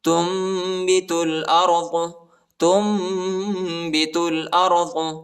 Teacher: اور ادھر جو ہے نون کی آواز نہیں نکالنا ہے، میم کی آواز نکالنا ہے اور اخفا بھی کرنا ہے